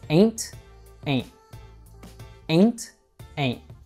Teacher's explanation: All right, I've been using my teacher English and I've been saying ain't, but it's pretty rare that you'll actually find a native speaker saying it in this way. We'll actually usually use a glottal T.